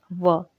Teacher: जब हम उच्चारण करते हैं व, तो दांत और होंठ के माध्यम से हम इसका उच्चारण करते हैं · हमारे जो होंठ और दांत होते हैं दोस्तों, ये दोनों आपस में संपर्क में आ जाते हैं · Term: दंतोष्ठ्य ध्वनि